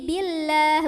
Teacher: Billah tipis, maka lidah kita datar. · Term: lam jalalah